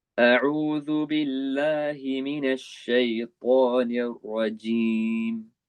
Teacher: The jim at the end, make sure there's no ch sound.